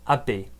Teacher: The D kind of disappears and you get kind of a B